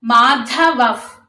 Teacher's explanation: ప అక్షరం ముందు విసర్గ ఉంటే దాన్ని ఎఫ్ సౌండ్ తో పలకాలి మాధవఫ్ అని పలకాలి. నాలుగో పాదంలో చూసుకుంటే దివ్యౌ శంఖౌ అక్కౌ అనేది కూడా